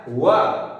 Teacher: व दांत प्लस ओष्ठ से, इसीलिए नाम है इसका दंतोष्ठ